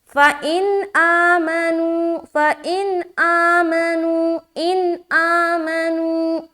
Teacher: یہاں پر اظہار کا قاعدہ بنے گا، یعنی کہ نون کی آواز کو صرف اور صرف ظاہر کرنا ہے، یہاں پر دیر بالکل نہیں کرنا۔ فَإِنْ آمَنُوا، فَإِنْ آمَنُوا، اِن آمَنُوا ایسا پڑھنا ہے، یعنی کہ ان ہوتے ہی جلدی یہاں سے نکل جائیں گے۔